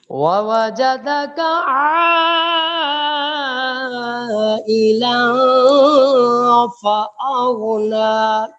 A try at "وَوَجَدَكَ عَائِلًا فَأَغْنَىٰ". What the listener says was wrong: نہیں، غین میں قلقلہ نہیں ہے.